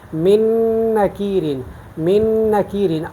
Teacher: من نکیرن، نون ساکن کے بعد نون، دیکھیں نا نون ساکن کے بعد یہ نون آیا ہے، تو من نکیرن، من نکیرن، تو ہم من نکیرن نہیں پڑھتے بلکہ نون کو نون میں مدغم کر کے ہم پڑھتے ہیں من نکیرن، من نکیرن، اور یہ دوسرا نون جو ہے اس کو مشدد کیا جاتا ہے۔ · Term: ادغام